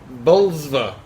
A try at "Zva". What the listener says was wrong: Zva. Usually they don't pronounce the first.